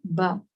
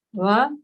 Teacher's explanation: So they are like, you say, produced with the lips, va, ba, va, ba. One is completely closed lips and one is the teeth and the lips.